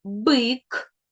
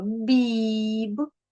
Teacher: В першому слові звук Б у нас приголосний, твердий, так, в слові бик. А у слові біб у нас звук Б. Він приголосний, м'який.